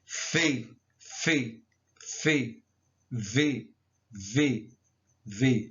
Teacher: são pronunciadas pelo contato entre os lábios e arcada superior dos dentes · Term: labiodentais